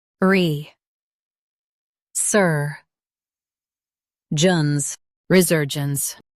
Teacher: Emphasize ser and keep gence smooth.